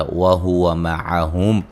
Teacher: موٹا ادا کریں گے اس سے پہلے حرف پر زبر ہے وَهُوَ مَعَهُمْ میم ساکن کا اظہار ہے